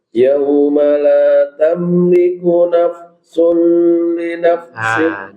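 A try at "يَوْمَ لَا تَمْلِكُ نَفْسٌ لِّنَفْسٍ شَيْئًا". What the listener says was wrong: Di situ nggak boleh ditempo. Nafsun li nafsin syai'a. Dengung ya itu tidak boleh terlalu panjang, ya. Tempo itu tidak boleh terlalu panjang.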